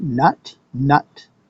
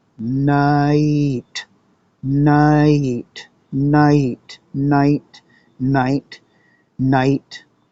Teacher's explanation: So you create some space between the n and the t, and you drop an e in there.